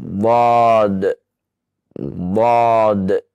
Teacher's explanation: Dengan cara menempelkan sisi lidah ya ke gigi belakang atau gigi geraham. Bagian atas dinaikkan ya lidahnya, kemudian ditempelkan, maka keluarkan hurufnya.